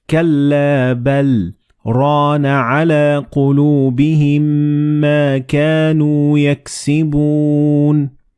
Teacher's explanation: you're going to stop very momentarily for like half a second and then continue reading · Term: a very short pause